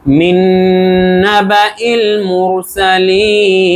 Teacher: মুর এখানে র মোটা, কারণ এর আগে পেশ আছে তাই